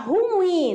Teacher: na sílaba mais forte é a última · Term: oxítona